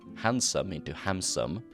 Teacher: the interchanging of alveolar and bilabial nasals, that is M and N